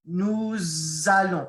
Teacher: it's almost like I'm putting a silent Z in the middle that's just because they want things to flow in French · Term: liaison